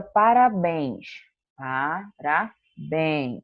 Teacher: parabéns também demora mais para falar o bem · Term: sílaba tônica